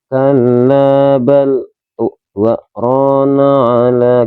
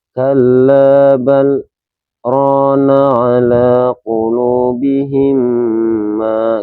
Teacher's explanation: kita wajib berhenti, tapi dengan tanpa bernapas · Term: saktah